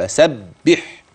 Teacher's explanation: تتحول الى حرف اخر اخر ايه فسبح باسم ربك العظيم فسبح الحاء وخلي بالك من صوتها كويس كده وفي بعض من الهواء خارج معها طبيعي بلا تكلف فسبح هكذا فسبح باسم كلمه اسم واحدها اذا تلفظت بها ستنطق